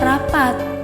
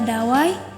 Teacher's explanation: bunyi apiko alveolar di mana adanya pertemuan antara ujung lidah dan gigi seri atas yang di mana ujung lidah ini berperan sebagai artikulator aktif dan